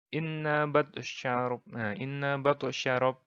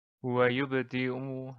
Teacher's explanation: qalqalah sugro ini kecil karena pantulannya tidak begitu diperlihatkan.